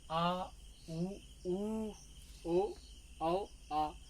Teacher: जीभ का पश्च भाग काम करता है